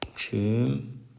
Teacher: Hökümdar sözündə göründüyü kimi ü saiti artmışdır. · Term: səs artımı